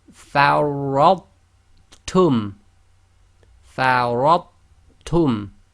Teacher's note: We do not do the echo on the tha, i.e. we seamlessly join the sound of the tha to the ta.